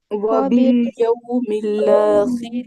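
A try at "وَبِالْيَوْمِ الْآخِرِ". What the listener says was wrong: باللہ سے تشدید نہیں لانی. ٹھیک ہے، لام کا سکون ختم کر دیتے ہوتے ہیں. صرف لام پہ زبر آتی ہے، لام زبر لا. مل مل، میم کو لام کیسے جوائننگ نہ دے.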